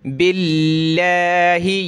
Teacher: लफ्ज़ अल्लाह से पहले ज़ेर हो तो लफ्ज़ अल्लाह को बारीक यानी पतला करके पढ़ते हैं। यहाँ लफ्ज़ अल्लाह से पहले वाला वर्ड बा, इस पर ज़ेर है तो बारीक पढ़ेंगे।